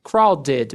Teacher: esse ed do crowded vai ter um som de ided. Crowded meio nasalizado.